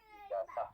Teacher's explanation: fonem Z itu dalam bahasa Arab dilafalkan ke dalam bahasa Indonesia tampaknya agak kesulitan tersendiri buat orang Indonesia, sehingga akhirnya yang muncul adalah S, jadi buat ijazah seperti itu.